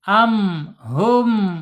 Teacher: Yang pertama ya dua bibir ya. Dua bibir karena mim ini bibir atas dan bawah terkatup ya. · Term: asyafatain